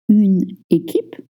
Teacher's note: The QU is pronounced with a K sound.